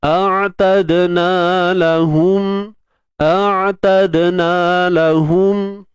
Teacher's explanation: Dal ni kita kena matikan dan berlakulah lantunan.